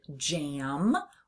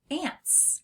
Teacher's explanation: We hear that nasalized a sound in the word jam or the word ants.